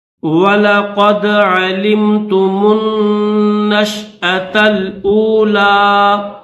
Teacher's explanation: عین زبر ع، لام میم زیر لم، تا پیش تو، میم نون پیش من، نون شین زبر نش، حمزہ زبر ا، وَلَقَدْ عَلِمْتُمُ النَّشْأَ، تا لام زبر تل. یہ جو گول تا ہے اس گول تا کو لام کے ساتھ ملائیں گے، اس الف کو نہیں پڑھیں گے